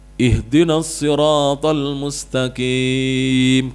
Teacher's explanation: kimnya yang malah panjang, bukan ro-nya